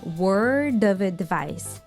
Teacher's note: the sound f changes into v, and everything just links together